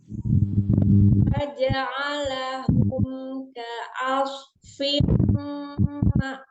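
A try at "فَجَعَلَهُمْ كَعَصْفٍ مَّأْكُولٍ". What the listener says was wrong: Masih ketahan ya, Umi? Masih ketahan ya, dilepas lagi.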